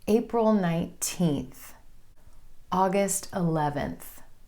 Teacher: If you're sharing the month and the day, you want your emphasis to fall on the number of the day.